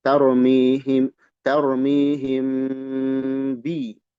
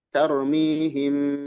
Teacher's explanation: Mim kalau menghadapi ba, dia dibaca dengung. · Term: ikhfa syafawi